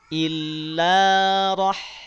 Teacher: Berarti ada dua huruf, yang satu dia bunyinya tebal, yang satu lagi bunyinya tipis. Maka pastikan saat kita berpindah ke huruf H, pangkal lidahnya sudah tidak naik lagi. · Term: hak sukun